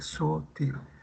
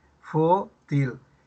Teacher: En la palabra sutil está bien, la sílaba tónica es til, pero en futil la sílaba tónica es fu.